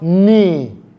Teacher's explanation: the letter K in that word, which is supposed to be pronounced as ka, will be silent. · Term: silent k